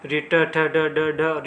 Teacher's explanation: ड का जो उच्चारण स्थान होता है वो मूर्धा में होता है। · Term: मूर्धन्य